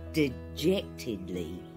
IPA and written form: dɪʤɛ́ktɪdlɪj. (Dejectedly)